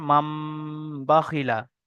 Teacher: তানবিনের পরে বা এসছে, তাই নুন সাকিনকে মিমের দ্বারায় পরিবর্তন করে একালি পরিমাণ গুণনা সহ পড়তে হবে। একে ইকলাব বলে।